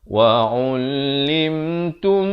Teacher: dibacakan dengan dengung 2 harakat, idgham mislain, mim mati bertemu mim, dibacakan tum 2 harakat baru masuk.